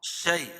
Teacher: یا ساکن سے پہلے زبر ہے تو یعنی اس کو نرم آواز کے ساتھ جلدی ادا کریں گے